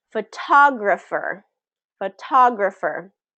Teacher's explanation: So the stress is on what? The second syllable, right?